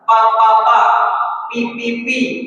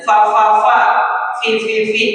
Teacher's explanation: fa itu nempel bibir tapi bibir bawah yang nempel dengan gigi atas.